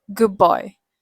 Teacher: For typical native English pronunciation pronunciation with assimilation, the D often assimilates to B becoming a bilabial stop. So it sounds more like good boy.